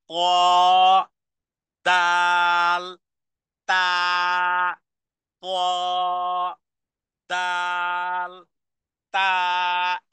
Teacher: জিহ্বার আগা সামনের উপরের দুই দাঁতের গোড়ার সাথে লাগিয়ে তিনটি অক্ষর উচ্চারণ হয় ত দাল তাল ত দাল তা একই মাখরাজ একই উচ্চারণের জায়গা